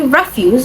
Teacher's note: refuse, is the noun form and it is stressed on the first syllable.